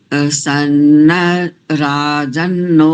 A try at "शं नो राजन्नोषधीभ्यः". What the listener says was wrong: शन्न नहीं करेंगे, दूसरी पंक्ति को प्रथम देखो, दूसरी पंक्ति का जो प्रथम पद है शन्न, ऐसा नहीं करेंगे। शन केवल शन राजन्नोष, शन राजन्नोष, शन राजन्नोष, ऐसा केवल